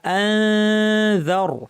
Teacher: যালের মাখরাজে জিব্বা নিয়ে নাক থেকে গুন্না করতে হবে। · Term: ইখফা